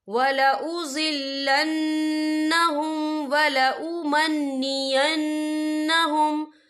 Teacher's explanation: یہاں دونوں جگہوں پر نون مشدد ہے تو یہاں پر غنہ ہوگا، اور غنّے کی مقدار 2 سے 3 سیکنڈ ہوگی